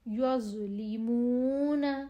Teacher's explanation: زو کی آواز موٹی اور نرم ہوتی ہے